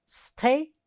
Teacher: It has 3 syllables, and the first one is stressed.